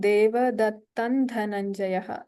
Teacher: So here Panchajanyam Hrishikeshaha, here the Murdhanya Shakara is there, and Deva Dattan Dhananjayaha. So the Anuswara takes the form of a Nakara here. And Poundran Dadhmau, here also the Anuswara takes a Nakara.